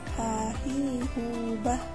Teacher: Melafalkan huruf H dikeluarkan dari tengah tenggorokan.